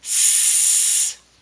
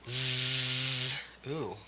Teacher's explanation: if I turn my voice off S sounds like an S my voice on sounds like a z z so we look up here the S is at the